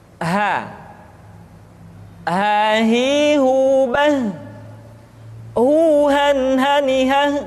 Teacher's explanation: huruf ha dikeluarkan dari tenggorokan yang terjauh, sama seperti kita mengucapkan huruf a.